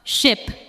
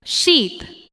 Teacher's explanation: In ship, the sound is short and relaxed. In sheep, the sound is longer and the lips may spread slightly.